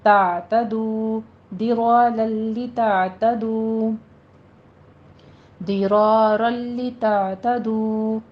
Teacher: تنوین کا قاعدہ آ رہا ہے ادغام بلا غنہ، یہاں پہ درارن نہیں کہنا ہے ، رلی لام باریک رکھنا ہے، تعتدو، درارا لتعتدو، درارا لتعتدو، · ضاد کو پر پڑھنا ہے، حروف مستعلیہ میں سے ہے